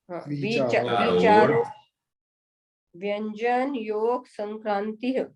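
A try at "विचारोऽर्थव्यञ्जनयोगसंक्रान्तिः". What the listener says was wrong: आप वी में छोटी मात्रा बोल रही हैं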